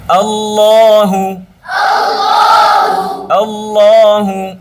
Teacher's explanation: ল এভাবে টান দেওয়া যাবে না, ল ল, হ্যাঁ, হু ঠোঁট গোল করতে হবে